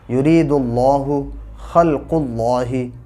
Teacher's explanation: اللہ کے لام سے پہلے زبر یا پیش ہو تو پر پڑھا جاتا ہے، تو اب یہاں پہ پیش آ گیا ہے دال پر تو یہ پر پڑھا جائے گا۔